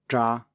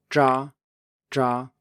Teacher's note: we still have the sh bit in it, ja, it's pretty short, but it is there, and in front of it we have a stop. So that means that we stop the airflow and then let it out again. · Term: ZH